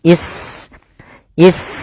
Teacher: Wa ismailu ismailu ish di sini sunnya sukun. Yaitu kita kenal ya sin itu punya sifat hames. Yaitu mengalirnya nafas.